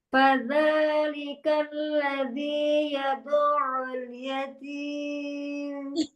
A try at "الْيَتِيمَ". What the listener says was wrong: Umi 5, Umi 5. Jangan naik Umi. Yatim.